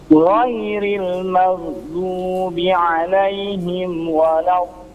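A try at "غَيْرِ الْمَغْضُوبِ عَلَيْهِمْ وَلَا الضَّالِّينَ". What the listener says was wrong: Baik, untuk dotnya jangan langsung ya. Jangan waladdallin, tapi waladh gitu ya. Dialirkan dulu. Waladh.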